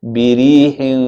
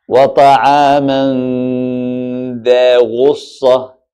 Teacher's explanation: And that's the ghunna, that's the ikhfa. You hear the sound of the noon, it disappear with the ghunna, and the ghunna merge with the makhraj of the next harf.